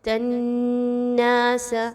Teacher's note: نون مشدد پہ غنہ کریں گے، ظاہری بات ہے تا اور نون کو آپس میں ملاتے ہوئے تناس، ناک میں آواز کو لے کے جائیں گے غنے کی۔